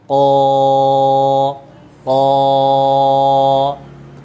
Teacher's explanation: Ucapkan huruf qaf dengan mantap, ya kan? Naikkan pangkal lidahnya.